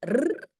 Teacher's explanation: le R est simplement mettre un peu plus de pression et la langue, elle se place un tout petit peu plus en arrière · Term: R roulé